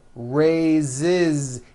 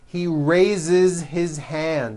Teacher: So we say I raise with a voiced Z ending, and he raises. Raises. He raises his hand.